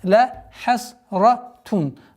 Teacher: Правило изгар, четкое произношение танвина, даммы